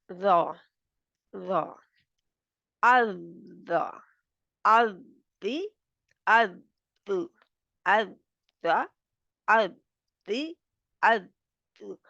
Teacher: अब आप देख सकते हैं कि ज़ुबान किधर है, पीछे से। ज़ुबान बिल्कुल ऊपर उठी हुई है, थोड़ी-सी तंग सी जगह है